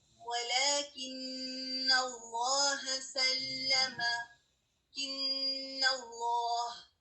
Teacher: ہم نون کی آواز کو ناک میں ٹھہرا رہے ہیں, نون مشدد کی آواز کو, تو اس میں یہ کیا ہے کہ ہم غنہ کو پرولونگ کر رہے ہیں.